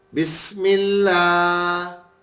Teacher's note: جب بھی زیر کے ساتھ ملا رہے ہیں ان دونوں ناموں کو تو باریک کر کے پڑھ رہے ہیں